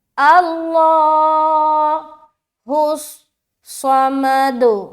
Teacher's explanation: لفظ اللہ کا لام موٹا کیونکہ اس سے پہلے زبر ہے